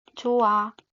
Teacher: 어간말 히읗은 모음 시작 어미 만나면은 히읗이 탈락하는 경우입니다. 이것도 예시를 보면 조 플러스 하면 좋아 라고 발음이 되는데요.